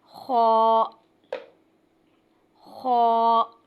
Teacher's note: یہ بھی حروف حلقی ہے مگر اس کو ادا کرتے ہوئے دونوں ہونٹوں کو گول کیا جائے گا تو تب جا کے ادا ہوگا۔